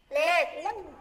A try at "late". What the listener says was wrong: À, các em phải đọc là late. Bật chữ tờ ra nha, late.